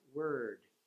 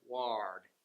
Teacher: And so just being able to relax, keeping the tongue kind of halfway up in your mouth, kind of in the front